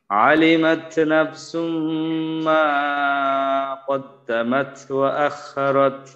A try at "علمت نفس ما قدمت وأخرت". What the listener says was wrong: লাইন ভাই, এখানে মা তো এক আলিফ, এক আলিফ যেন পরিমাণে বেশি না হয়ে যায়, আর শেষে আখরত, খয়ের উচ্চারণ খা যেন না হয়, খ।